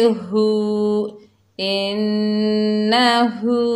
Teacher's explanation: हा के ऊपर उल्टा पेश है, एक अलिफ की मिकदार गुन्ना होगा। हा के ऊपर उल्टा पेश है, एक अलिफ की मिकदार खींच कर पढ़ेंगे